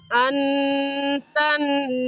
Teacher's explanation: ان پر ہم غنہ کریں گے کیونکہ نون ساکن کے بعد حروف حلقی جو کہ 6 ہیں حمزہ ہا عین ہا غین خا میں سے کوئی لفظ نہیں ہے اس لیے اس نون ساکن پر غنہ کریں گے. تنکحوہن میں بھی نون ساکن کے بعد حروف حلقی میں سے کوئی لفظ نہیں ہے غنہ کریں گے.